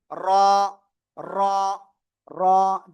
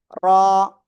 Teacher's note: জিহ্বার আগার পিঠ তার বরাবর উপরে তালুর সাথে লাগিয়ে এক আলিফটা নিয়ে উচ্চারণ করতে হবে